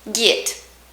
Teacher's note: Texas guys tend to sort of close up the short E sound, pen, and make it into a short I sound, pin. So, I is with your teeth together.